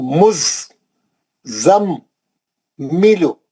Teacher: یذکرو مزمل. یہاں پہ میم پہ غنہ بھی ہے کیونکہ میم مشدد ہے